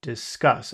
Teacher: And the accent here is on cuss. Discuss. Actually, scuss.